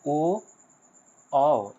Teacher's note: एंड इसके बाद है कंठोस्थ वर्ण यानी ओ औ यह दोनों के दोनों आपका कंठ और ओष्ठ से उच्चारण होता है